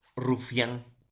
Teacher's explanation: Ahora, profesor, ¿por qué se dice creciente? Porque inicia con una abertura pequeña de la cavidad bucal y luego va con una abertura grande de la cavidad bucal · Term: diptongo creciente